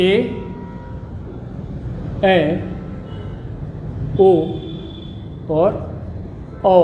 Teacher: ऐसे स्वर जिनके उच्चारण में मुख लगभग आधा बंद होता है उसे हम अर्धसंवृत स्वर कहते हैं।